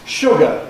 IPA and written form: ˈʃʊgə (sugar)